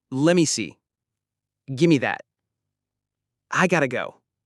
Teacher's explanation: let me becomes lemme. Give me becomes gimme. Got to becomes gotta. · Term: reductions in common phrases